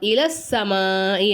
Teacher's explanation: இலா சொல்லக்கூடாது இல அப்படின்னு சொல்லணும்